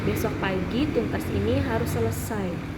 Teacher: Kalimat pengulang ini ketika ada seseorang yang berbicara, lalu teman-teman mengulang pembicaraan teman tersebut. Dan nadanya itu turun.